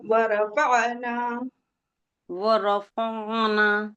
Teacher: فع کو کھینچنا نہیں ہے، عین کو نکالنا ہے